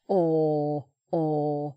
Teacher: it's just a round shape; I'm not making any r sound with it.